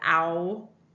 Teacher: I have a tendency to pronounce it with the Canadian raising, so you really hear that ow.